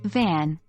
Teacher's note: V, like the V in van, pronounced with the bottom lip and upper teeth